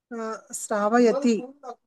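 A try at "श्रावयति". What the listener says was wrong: శ్రావయతి. షా అన్నది శ్రావయతి, సా కాదు ష, శ్రావయతి.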